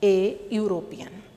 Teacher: the word European also starts with vowel E, but it is pronounced here like consonant Y.